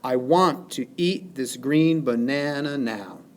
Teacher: For example, in this line, I want to eat this green banana now, we have 1, 2, 3, 4, 5, 6, 7, 8, 9, 10 syllables total. The pattern of stresses falls specifically unstressed, stressed, unstressed, stressed, unstressed, stressed, unstressed, stressed, unstressed, stressed. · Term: iamb